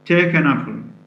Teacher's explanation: first word take is stressed and so is the word afro but the little word in the middle the word an is not stressed